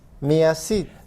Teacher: when we connect me, to a vowel, we add a y sound.